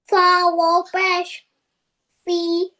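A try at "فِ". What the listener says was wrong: Is it pesh?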